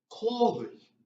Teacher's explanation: third tone is going up and then down again.